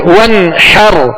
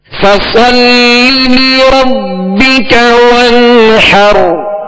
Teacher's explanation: यहां गुन्ना नहीं करेंगे, जाहिर पढ़ें। वन्हर, हा को वस्ते हल्क से अदा करेंगे।